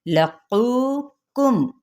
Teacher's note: اس کو پر پڑھنا ہے اور اس کو باریک پڑھنا ہے، یہ نرم تالو کے ساتھ جا کے لگے گا، اس کا جو پیچھے سے جڑ ہے زبان کی، اور یہ قاف کی، اور یہ سخت تالو سے جا کے لگے گی کاف کی ادائیگی میں